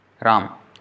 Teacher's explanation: in Hindi also the last vowel is not pronounced